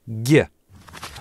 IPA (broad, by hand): ɟ